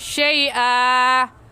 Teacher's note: شیئا میں زبر کی تنوین ہے، اور زبر کی تنوین میں وقف کرتے وقت ایک زبر پڑھا جاتا ہے، اس لیے اسے کہیں گے شیئا۔